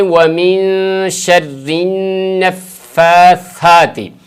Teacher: ومن میں نون اور اسی طرح شرن، اس پہ یہاں پر غنہ ہوگا نون پہ